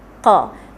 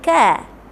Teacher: Iaitu pangkal lidah tolak ke anak tekak. Sebab tu bila kita sebut qa, makhraj kita punya anak tekak tu akan bergetar. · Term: huruf qaf